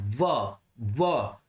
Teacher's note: अपन बोलते हैं ना व, तो दंत की सहायता भी ली जाती है, और प्लस ओष्ठ की सहायता भी ली जाती है, तो क्या हो जाता है, दंत ओष्ठ।